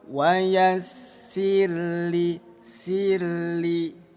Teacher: Nah, didahului harakat sebelumnya kasrah maka disebutnya ro tarkik. Tarkik artinya tipis. Dibaca tipis bunyi ro.